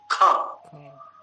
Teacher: तो इसमें महाप्राण है ना, बल अधिक लग रहा है ना। प्राण से यदि प्राण के बल को देखोगे तो बल अधिक है ना, तो इसीलिए इसको महाप्राण का या घोष बनता ऐसा कहा।